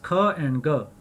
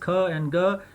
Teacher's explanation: The next pair is ख एंड ग। These sounds are produced by stopping and releasing airflow with the back of the tongue almost at the top of your throat. G is voiced and K is aspirated.